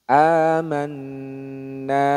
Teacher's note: jadi dengungannya ditahan dulu dipanjangkan jangan buru-buru